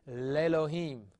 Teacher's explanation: Disappears, and the letter becomes dead. Well, when a letter quiesces, we have to compensate the form for it, and so we're going to lengthen the segol to a sere · the Aleph quiesces, or becomes silent, becomes quiet. And when this happens, the vowel disappears, composite schwa.